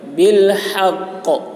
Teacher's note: حا کو حلق سے، اور قاف میں قلقلہ ہوگا. بالحق، آواز ٹکرائے گی.